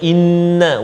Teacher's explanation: Ya, banyak sebenarnya dalam ayat yang keempat ni terdapat hukum-hukum yang melibatkan dengung ataupun gunnah. Pertamanya inna wajibal gunnah, 2 harakat